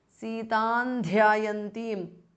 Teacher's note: Anuswara changes to n, which is the nasal or the anunasika of the tavarga.